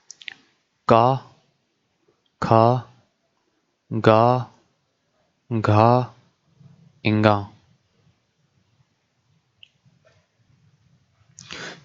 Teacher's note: जो का वर्ग के अक्षर हैं वो कंठ से बोले जाते हैं, कंठ से।